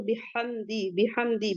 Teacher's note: ہا کو ہا وسط الحلق سے